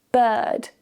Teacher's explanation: Notice again, we don't pronounce the R's. Bird. This is a very relaxed sound.